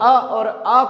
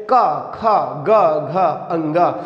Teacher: जब हम अ और आ को उच्चारित करते हैं तो वो कंठ के द्वारा उच्चारित होता